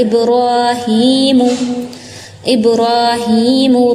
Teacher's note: را اور ہا کو کھینچنا ہے 2 counts